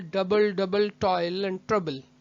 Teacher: पहला स्ट्रेस्ड है, दूसरा अनस्ट्रेस्ड, स्ट्रेस्ड, अनस्ट्रेस्ड, तो इट इज अ ट्रॉकी